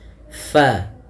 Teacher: huruf fa salah satu sifatnya yaitu dia hams, mengalirnya nafas. Fa, hati-hati di dalam melafalkannya, jangan sampai dia terbaca dengan fabaddalal ladzi.